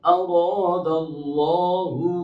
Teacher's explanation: یہاں پر 4 حروف موٹے ہیں، را میں را اور الف، اللہ میں اللہ کا لام اور اس میں کھڑی زبر میں الف مدہ۔